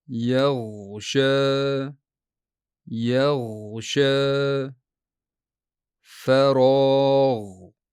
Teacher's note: tilning chuqur orqa qismi yumshoq tanglayga toʻliq emas, faqat deyarli tegadi. Nega? Chunki g'oyin bu uzluksiz tovish.